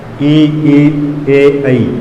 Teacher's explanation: इनका उच्चारण करते समय जीभ के अग्र भाग, जीभ का अग्रभाग उठता है, जीभ का अग्रभाग उठता है।